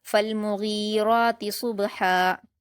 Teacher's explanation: میم پر حرکت جلد پڑھیں گے اور غین کو کھینچیں گے